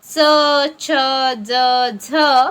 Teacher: दात व तालू यांच्यामध्ये उच्चारला जाणाऱ्या ध्वनींना वत्सर्य ध्वनी म्हणतात. यांनाच दंत तालव्य वर्ण असेही म्हणतात.